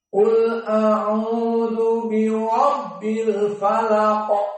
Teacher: Al-falaq, di akhir qalqalah dan dia mufakhamah